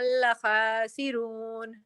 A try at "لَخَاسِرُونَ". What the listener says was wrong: خا کو ہیوی کریں، لخاسرون.